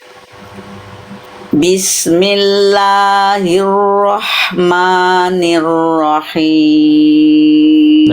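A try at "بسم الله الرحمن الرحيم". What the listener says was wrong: Huruf ro yang awal, yang kedua udah bagus. Yang awal ada nuansa-nuansa Eropa. Ya, jangan ada nuansa Eropa.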